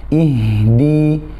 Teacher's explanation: sifat rokhawah, ya, dan sifat hams pada huruf ha jangan terputus